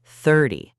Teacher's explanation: But when you say 30, the stress is on the first part, 30.